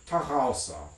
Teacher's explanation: it has a voiced uvular fricative in it